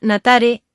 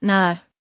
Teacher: tiene una sonorización en la t que es transformada en D y un fenómeno fonético de apócope en la E, dando como